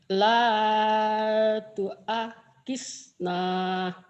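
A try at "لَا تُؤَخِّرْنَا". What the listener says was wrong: la tuakhir khir bukan hisna. Dalnya kayak digigit.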